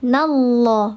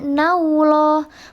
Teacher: Namanya lafzul jalalah tafkhim. Sahih, maka dibacanya tebal. Dia nallah, bukan juga nauloh, bukan nauloh.